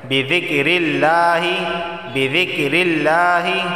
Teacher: لفظ اللہ سے پہلے زیر آیا ہے تو لفظ اللہ کو باریک پڑھا جائے گا